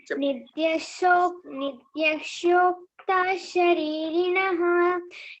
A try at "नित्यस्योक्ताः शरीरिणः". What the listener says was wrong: అయినంత వరకు షకారం కాకుండా సకారం. నిత్యశోక్త శరీరిణః. షా ఎక్కువ షా ఇక్కడ. సాకు యావత్తు కదా అక్కడ, సాకు యావత్తుంది కాబట్టి నిత్యస్యోక్త శరీరిణః.